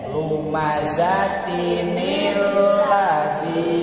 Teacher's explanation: Ari tanwin teh nun anu disukunkeun. Ngan pedah lamun nun anu disukunkeun bakal patepung sukun dua jeung sukuna hamzah, maka teu tiasa dibaca atuh nun anu kahiji disukunkeun jadi dikasrohkeun.